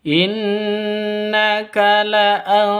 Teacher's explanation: Berdiri sendiri sebagai ghunnah musyaddadah, senandung dua ketukan